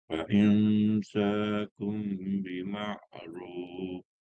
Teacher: Tukar kepada mim, lafaz mim. Kemudian berserta dengung. Dengung 2 harakat. Kiralah 1, 2.